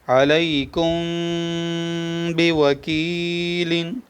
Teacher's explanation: میم ساکن کے بعد با آیا ہے، اخفاء شفوی ہو رہا ہے۔